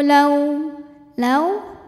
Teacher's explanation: panjang dua harakat innalladzina kafaru lau lau ada huruf Lin sebab ada wau sukun didahului harakat fathah maka dibacanya lembut atau lunas Lau Anna kemudian ada hukum ghunah musyaddadah karena Nun bertasdid cara